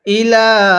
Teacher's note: লামের মধ্যে অবশ্যই 3 আলিফ টানতে হবে, কারণ মদের হরফের উপর এরকম চিকন চিহ্ন এরপরে যদি এরকম লম্বা হামজা থাকে তাহলে সেখানে অবশ্যই 3 আলিফ টান দিবেন।